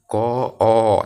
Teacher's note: ক যখন ক উচ্চারণ করবা সেটার সাথে কিন্তু অ উচ্চারণ হয়ে যাবে